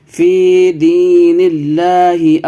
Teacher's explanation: فی کو کھینچیے، حرف مدہ ہے، اور دی کو بھی کھینچنا ہے، فی دی، نون کو لام سے ملائیے